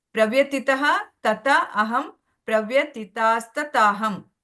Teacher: ಅದು ಯಾಕೆ ಬರ್ತದೆ ಅಲ್ಲಿ ವಿಸರ್ಗವನ್ನ ನಾವು ಕ್ಯಾನ್ಸಲ್ ಮಾಡಿ ನಾವು ಒಟ್ಟಿಗೆ ಓದುವಾಗ ಅಲ್ಲಿ ಸ್ತತ ಅಂತ ಬರುತ್ತೆ